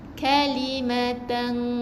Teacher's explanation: Tapi kalau ifak, jangan bunyikan nun. Jadi jangan baca tepat kepada bunyi nun tu, bunyi N. Jangan keluarkan bunyi N. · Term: ifak hakiki